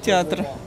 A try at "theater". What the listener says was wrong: Язык просунуть между зубами. Не театр, а театр.